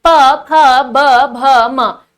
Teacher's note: हमारे जो होठ हैं, ऊपर और नीचे का होठ दोनों स्पर्श हो रहे हैं, ठीक है। होठों का आपका मूवमेंट हो रहा है ओष्ठीय व्यंजन में। · ओष्ठीय व्यंजन कहलाते हैं। इसमें ऊपर और नीचे का दोनों के होठ आपके मिलेंगे इनको बोलते समय